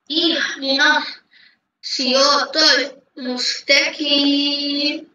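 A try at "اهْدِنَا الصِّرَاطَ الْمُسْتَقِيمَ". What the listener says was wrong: এত এত এত দ্রুত না, আরো ধীরে ধীরে রিল্যাক্সে বলো।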